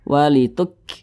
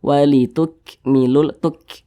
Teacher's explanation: Di sini ada huruf kaf. Huruf kaf ini kalau dia sukun ya, ada aliran udara atau aliran nafas yang mengalir ketika mengucapkannya. Karena huruf kaf ini dia salah satu huruf yang memiliki sifat hamas, begitu.